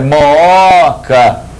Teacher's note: A sílaba tônica não é o primeiro O, é o segundo O